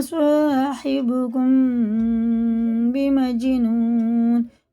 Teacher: میم ساکن کے بعد با آتا ہے تو یہ اخفا شفی ہوتا ہے، یہ غنہ اور اخفا کر کے پڑھا جاتا ہے